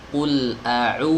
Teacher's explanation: Qul a'u, bukan qul a'u. Ya, bukan w, tapi u yang dipanjang. Namanya wawu madiyah. Ya. Ada wawu yang bukan madiyah, maka itu w, ya, huruf w dalam bahasa Indonesia.